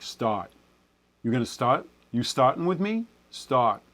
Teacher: There's a little bit of lip rounding that tends to happen for New Yorkers. It's just a carryover of what happens for most Americans with a slight lip rounding on that vowel.